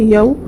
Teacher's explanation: واو ساکن سے پہلے یا کے اوپر زبر ہے، نرم آواز کے ساتھ جلد ادا کریں گے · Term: واولین